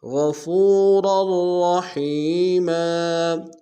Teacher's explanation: ان اللہ کان غفورا رحیما، غین کو موٹا ادا کریں گے، فا کو واو کے سامنے گے، مدہ کہ دال میں کھینچیں گے، را کی تنوین کو اگلے را کے سامنے آنا ہے، موٹا ادا کریں گے، شدہ زور دیں گے، رحیم یا مدہ کہ دال میں کھینچیں گے، میم کو تنوین غنہ کریں گے۔